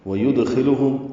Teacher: واو ہونٹوں کی ناتمام گلائی سے ادا ہوگی